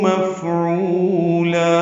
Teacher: مفعولا میں فا ساکن ہے، اس پہ ہمس ہے. ہو واو مدہ ہے، لا الف مدہ ہے مد عوض، 2 حرکات لمبا کریں گے.